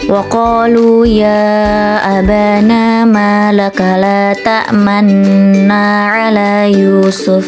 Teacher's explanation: Saat membaca lafaz la ta'manna, tepatnya pada huruf nun, bibir kita perlu dimonyongkan menyerupai bentuk bibir saat membaca dhammah. Apabila diibaratkan seperti membaca kata la ta'mannuna, namun bacaan untuknya tidak dibunyikan, hanya bibirnya yang tetap dimonyongkan. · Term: ismam